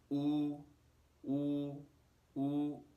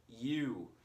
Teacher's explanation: it does not slide when we pronounce this vowel in Mandarin